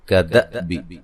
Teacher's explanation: دال کو جو ہے وہ حمزہ سے ملائیں گے اور حمزہ کو جھٹکے سے ادا کریں گے